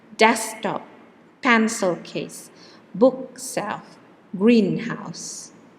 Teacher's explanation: if they are nouns nouns plus nouns or adjective plus nouns then the stress is on the first part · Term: word stress